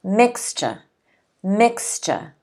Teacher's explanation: the stress is on the first syllable there are two syllables